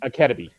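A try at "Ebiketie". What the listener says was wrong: You're switching the K and the B. It's Ebikettie.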